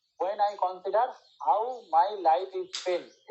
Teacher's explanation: when টা unimportant, তাই জন্য এটা হচ্ছে আমাদের আনস্ট্রেস। তারপরে আই ইম্পর্টেন্ট, তাই জন্য হচ্ছে স্ট্রেস। তারপর কনসিডার মানে বাইসিলেবিক বা ট্রাইসিলেবিক ভার্বের হলে আমাদের দ্বিতীয় সিলেবেলের স্ট্রেস হয়।